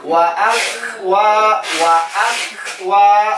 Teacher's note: kaf sukun pengucapannya pecah